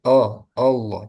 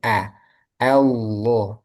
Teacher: Nah, tadi kan a hamzah itu termasuk huruf yang tipis sehingga jangan o Allah tapi a Allah